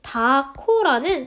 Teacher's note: 이 경우에는 히읗이 키읔으로 바뀌어 발음되는데 사실 정확히 말하면 히읗하고 뒤에 있는 기역이 합쳐져서 키읔처럼 실현이 되게 됩니다. 이처럼 똑같이 다의 히읗 받침인 음운인데 이것이 일정한 환경에 따라서 즉 홀로 쓰이냐 뒤에 아서라는 어미가 오냐 는이 오냐 고가 오냐에 따라서 다르게 발음되는 현상 이런 것을 우리는 음운 변동이라고 합니다.